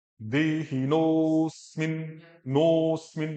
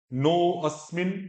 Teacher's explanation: जब उनकी संधि हुई ना तो ओ और अ वो हशीच सूत्र के द्वारा ओ ही बन गए।